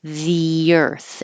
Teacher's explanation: It's a the because the next word begins with a vowel, and then that means there's an invisible Y because your tongue's going from the very high the to the lower earth. The earth, and it will sound like a Y.